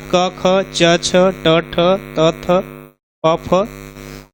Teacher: प्रत्येक वर्ग का पहला और दूसरा, ठीक, यह है आपका अघोष